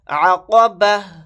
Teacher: آیت کرنے کی صورت میں تا کو ہا ساکن کی آواز بنا کر پڑھیں گے